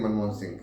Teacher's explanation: जैसे ही अनुस्वार के बाद में ह का प्रयोग होता है तो वो स्वाभाविक रूप से घ जैसा उच्चारण किया जाता है।